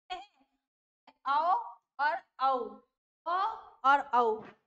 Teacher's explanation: हमारे गले से तो उच्चारण हो ही रहा है उसके साथ साथ हमारे होठ भी भी सक्रिय रहे